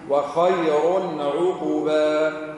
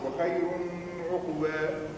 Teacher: وخير هنا إظهار ثانية لأن بعد التنوين عين